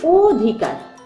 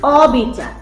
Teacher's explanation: ঠোঁট ও এর মত গোলাকৃতি হয়ে আসছে এটি হচ্ছে সংবৃত অ তাহলে সংবৃত অ এর উচ্চারণ ও এর মত স্বাভাবিক নয় স্বাভাবিক